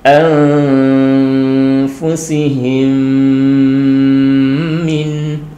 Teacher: Jadi di sini mimnya ini dimasukkan kepada mim berikutnya dan disertai dengan berdengung. Jadi kalau di sini memang diidghamkan, dimasukkan. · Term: idgham mimi